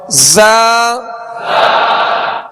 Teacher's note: ज़ा में सख्ती सीटी की आवाज पैदा होगी